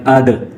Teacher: دال چونکہ ساکن ہے اور دال ساکن ہو تو یہ حروف قلقلہ میں سے ہے، تو اس پر قلقلہ ہوگا، یعنی اس کی ادائیگی کے وقت ہم جھٹکا دیں گے